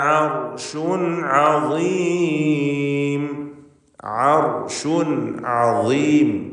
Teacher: തൊണ്ടയുടെ മധ്യം. റാഇന് തഫ്ഖീം കൊടുക്കണം, കാരണം അതിന് സുക്കൂൻ മുമ്പിൽ ഫത്ഹുമാണ്. ആർഷുൻ എന്ന് റായി തടിപ്പിച്ചുച്ചരിക്കുക.